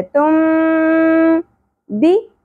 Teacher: یعنی ہم نے نون کی اواز کو میم میں بدلتے ہوئے پڑھنا ہے اسی لیے یہاں پر چھوٹی سی میم لکھ دی جاتی ہے · यानी हमने नून की आवाज़ को मीम में बदलते हुए पढ़ना है, इसीलिए यहाँ पर छोटी सी मीम लिख दी जाती है। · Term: اقلاب, इक़लाब